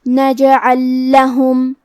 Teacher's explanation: یہاں حکم ہے ادغام مثلین. ہم پہلے لام کو دوسرے لام میں ملا کے ایک ہی لام اور تشدید کے ساتھ پڑھیں گے